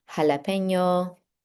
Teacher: J, which makes what we think of in English as an H sound.